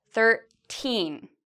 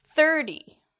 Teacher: teen is louder and longer. Thir is actually shorter